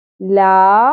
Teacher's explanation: یہاں پر اب لام کو ہم پہلے ساکن کر کے حمزہ کی زیر کے ساتھ جوڑیں گے، اس کے بعد زبر کے ساتھ الف حرف مدہ ایک الف کے برابر کھینچنا بھی ہے